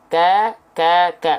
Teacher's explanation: Hanya berupa percikan nafas saja. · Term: hams